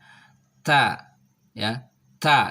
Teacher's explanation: Ta itu tempat keluarnya adalah ujung lidah disentuhkan dengan gigi seri. Ya, ta ya, ta.